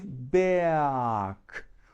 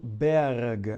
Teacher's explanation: o r ele vem antes da letra g que é uma consoante então ele se torna um R vocálico ele vira um A